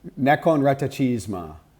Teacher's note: They're rolling the R like Spanish. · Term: hard rolled R